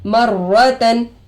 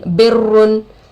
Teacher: रा पर तशदीद आकर है दो मरतबा पढ़ेंगे, एक पिछले वाले हरफ से एक खुद से।